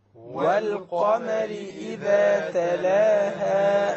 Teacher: So again, we have the moon, the lunar letter, which is the qaf over here. So we pronounce the lam.